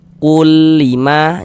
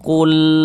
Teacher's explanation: Nah, ditahan itu jangan ya salah pendek saja karena dia tidak digunahkan, tidak didengungkan, pendek saja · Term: idgham bila ghunah